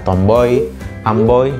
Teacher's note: perubahan kualitas vokal Madya belakang bundar oh sebagai vokal pertama yang berubah menjadi vokal tinggi depan tak bundar I sebagai vokal kedua · diftong naik karena perubahan kualitas dari vokal yang lebih rendah kemudian menjadi vokal yang lebih tinggi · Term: diftong oi